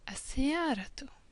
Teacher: And with the al at the beginning, it becomes as-siyaratu. Just one U at the end, but we can still hear the T.